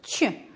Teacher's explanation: Произносим первый звук «Ч», звук согласный, глухой, мягкий.